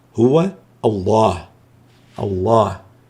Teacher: هو الحرف الذي سبق لفظ الجلالة مفتوح هو، فتأتي لام لفظ الجلالة هنا مفخمة، نقول هو الله، الله، لا نقول هو الله بل هو الله.